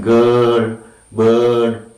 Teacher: Right, this is the sound, right. It is center of the tongue, between half open and half closed, and long sound, unrounded sound